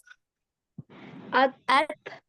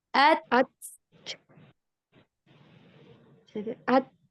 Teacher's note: cara pengucapannya itu ketika ta itu sukun, syiddahkan dulu baru dikeluarkan nafas. At, ditekan dulu.